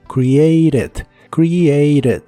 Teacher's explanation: en inglés americano es común pronunciar esta T como R